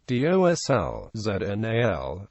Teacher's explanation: Some subdialects preserve l at the end of words